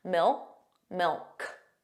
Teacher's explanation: did you hear that the final k sound that c was not pronounced it was just a mil mil so you put your your